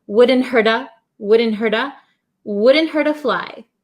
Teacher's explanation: the T becomes a flap T so it sounds like a soft D sound